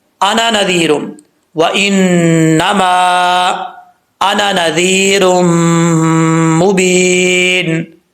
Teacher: نون کے آگے جو الف ہے یہ الف نہیں پڑھا جائے گا. قرآن کریم میں کچھ الفاظ ایسے ہیں جو لکھے جاتے ہیں پڑھے نہیں جاتے.